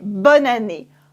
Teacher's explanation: in fast-spoken French, we take it all together and we say bonne année, just like one word.